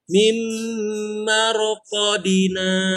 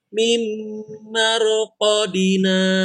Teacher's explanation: Ingat, qaf dan di-nya tidak panjang.